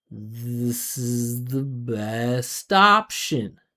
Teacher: And option is the most important word. Look how high up the pitch is in option compared to this is the